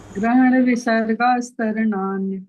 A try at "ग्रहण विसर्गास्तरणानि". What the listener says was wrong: ना मत बोलो, यहाँ दीर्घ है ना, तो यहाँ संयुक्त की जरूरत नहीं है, हमने खुद ही गलत बोला।